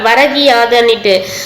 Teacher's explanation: ஸோ ஈயா வந்து மாறி இருக்கு. முதல் சொல்லின் இறுதியில் உள்ள கூ என்னும் எழுத்து கீ என்று ஒலிக்கிறது. அதுவும் வந்து முழுமையாக ஒரு மாத்திரை அளவில் ஒலிக்காமல் வந்து அரை மாத்திரை அளவு வந்து குறைந்து ஒலிக்கிறது. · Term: குற்றிய லிகரம்